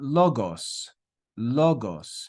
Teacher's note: you can hear the stress on that first Omicron where we have the accent mark